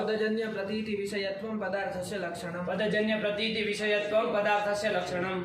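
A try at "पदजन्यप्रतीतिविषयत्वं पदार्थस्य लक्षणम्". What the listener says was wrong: ये जन्यम प्रतीतिम ये सब बीच में नहीं आना चाहिए बाबू। पदजन्य प्रतीति विषयत्वम पदार्थस्य लक्षणम, यही पदार्थ होता है।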